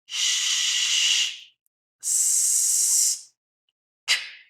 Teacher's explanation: Como puedes sentir, no se escucha una vibración. Como no se escucha una vibración de nuestras cuerdas vocales, eso significa que es un sonido sordo.